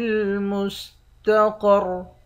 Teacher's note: قاف اور را کو موٹا پڑھیں گے، آخر میں را ساکن ہے۔